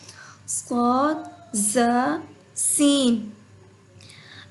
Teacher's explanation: زبان کی نوک سامنے اوپر نیچے 2 دانتوں کے اندرونی کنارے سے ادا ہوتا ہے۔ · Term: سیٹی والے حروف